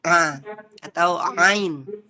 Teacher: Tepatnya adalah di wastul halqi. Wastul halqi itu adalah tengah tenggorokan ya. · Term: huruf ain